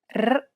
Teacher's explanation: place the tip of your tongue on the gum ridge behind your upper teeth, just like you do when you want to say the English D sound. Then relax your tongue and blow out air. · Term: rolled R sound